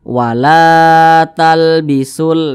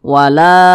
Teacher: huruf lam alif ini dibaca panjang. Panjangnya itu 2 harokat atau kira-kira 2 ketukan. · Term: mad tabi'i